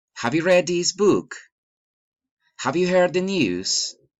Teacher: general questions rising intonation